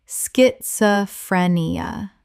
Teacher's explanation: The s-c-h makes a sk sound. Five syllables.